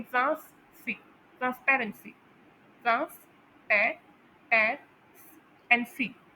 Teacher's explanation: अब यहाँ पर नोट करें पैर पर एक स्ट्रेस आ रहा है